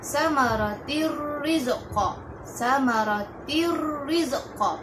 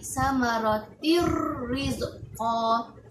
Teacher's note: Ra tersebut ditarik masuk dalam tanwin, yang mana bacaannya samaratir rizqa.